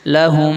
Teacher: میم کو میم میں ملا کر غنہ کے ساتھ ناک سے پڑھیں گے